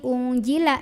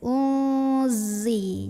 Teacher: Nah, ini zai ini hati-hati jangan sampai dibaca jim unjila tapi unzi. Ujung lidah tempel di gigi bawah ya, suaranya tuh seperti suara lebah, ada z gitu. Uzi. Jadi bukan ungji tapi uzi, zi ya.